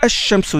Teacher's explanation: Puisque shams, quand on dit shams, ash-shamsu, vous avez le hamzat al-wasl, le alif, et puis vous avez le lam, et puis vous avez le shin. Seulement, le lam, vous ne le prononcez pas, vous ne dites pas al-shamsu, vous dites ash-shamsu direct. · Seulement, le lam, vous ne le prononcez pas, vous ne dites pas al-shamsu, vous dites ash-shamsu direct. Donc le lam, il entre dans le sha, dans la lettre shin. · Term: lettres solaires